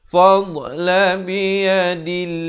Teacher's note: Di sini kena baca nipis lafzul jalalah.